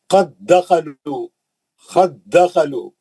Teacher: वो दाल साकिन छोड़ देना, खलखला चले जाता।